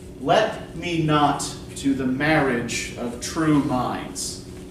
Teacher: Yeah, let and not are stressed.